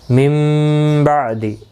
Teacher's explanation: نون ساکن کے بعد متحرک با آیا ہے، یہاں پر قلب ہوگا